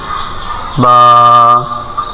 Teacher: বা ঠোঁটের ভিজা জায়গা থেকে বা